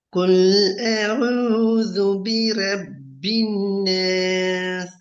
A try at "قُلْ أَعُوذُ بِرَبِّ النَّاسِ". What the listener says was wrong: பெரிய காஃப் sound வரணும். قل أعوذ. பெரிய காஃப்.